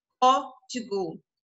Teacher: O O aí está bem aberto.